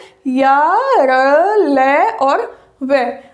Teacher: अब बात की जाती है कि ये कहाँ से बोले जाते हैं, इनका उच्चारण स्थान क्या है? तो इनका उच्चारण स्थान है य का तालव्य, र का मूर्धन्य, ल का दंत्य और व का दंत ओष्ठ्य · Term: अंतस्थ व्यंजन